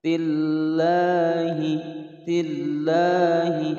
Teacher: ada lafadz lam jalalah sebelumnya kasroh, dibaca tipis atau tarkik